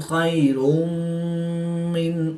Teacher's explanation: تو پیش کی تنوین کے بعد میم حروف یا معلوم میں سے ہے تو یہاں پر ادغام مع الغنہ ہوگا، یعنی غنہ کر کے پڑھیں گے۔